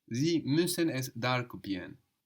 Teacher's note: The R is getting swallowed up there, no? But the N is important.